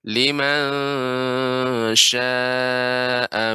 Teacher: Adapun shin itu bukan limang, tapi liman sya, ya, lidah di tengah-tengah. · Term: ikhfa